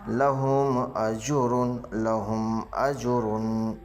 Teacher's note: میم ساکن کے بعد با میم کے علاوہ باقی 26 حرفوں میں سے حمزہ ہے، اس لیے میم ساکن کا اظہار شفوی ہوگا